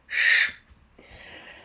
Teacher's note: Vous voyez comme on a du bruit apériodique ici et pas de pulses, pas de fréquence fondamentale, pas de vibration des cordes vocales. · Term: fricative